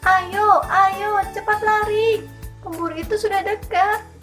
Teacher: Ketepatan tinggi rendahnya nada yang diucapkan pembaca harus sesuai dengan situasi dalam cerita. Misalnya, ketika suasananya sedang tegang, maka nadanya tinggi. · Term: nada tinggi